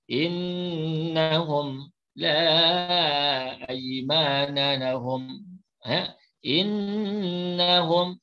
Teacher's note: dibaca dengung 2 harakat.